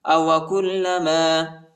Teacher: کاف کو لام کے ساتھ ملائیں گے، لام کو شدت کے ساتھ، سختی کے ساتھ پڑھیں گے، شد آیا ہے